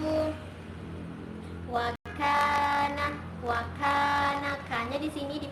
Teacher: dipanjangkan dipanjangkan 2 harokat karena dia adalah Mad Thobi'i